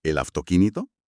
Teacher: La boca anticipa el silencio relativo de la laringe para la consonante sorda y produce una F en lugar de una V. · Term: la F sorda